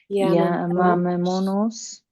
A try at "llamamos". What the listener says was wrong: You were adding an extra syllable there.